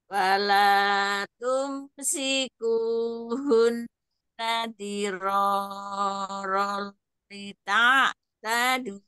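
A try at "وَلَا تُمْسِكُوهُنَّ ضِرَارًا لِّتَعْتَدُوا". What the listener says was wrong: diro cukup dua harokat ya sedikit kepanjangan diro lita tadu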